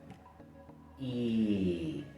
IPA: iː